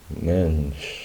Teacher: No se dan cuenta la vocal, el sonido de la E termina en la N y después está como una sola sílaba casi esa SCH al final.